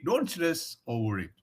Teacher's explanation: R is a consonant, and the next word is it. Over it. I starts with a vowel. So it should like combine.